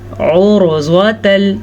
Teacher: रॉ साकिन से पहले वाले हर्फ पे पेश है तो हमने रॉ को पुर पढ़ना है, ज़्वाद को भी पुर पढ़ना है क्योंकि ज़्वाद हरूफ़े मुस्तालिया में से है और हरूफ़े मुस्तालिया हमेशा ही पुर पढ़े जाते हैं।